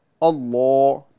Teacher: اس لام کو پر یعنی موٹا پڑھا جاتا ہے